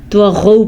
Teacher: قلقلہ طا پر اور غین بھی پر کا مطلب ہے ان کو موٹا کر کے پڑھنا ہے. تغو نہیں پڑھنا، طغوا پڑھنا ہے.